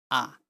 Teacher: যখন জীবটা একেবারে মাঝখানে থাকে সামনেও না পেছনেও না। তখন সেটাকে বলে মধ্য স্বরধ্বনি।